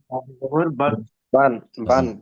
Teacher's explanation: নুন সাকিনটা বাংলায় দন্তনের মতো হয়